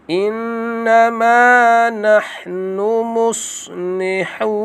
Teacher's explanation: Qalu innama dengun wajib al-gunnah. Wajib dengun 2 harakat.